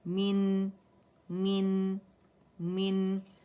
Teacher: نون پہ سکون ہے، اس کا توسط شو کرنا ہے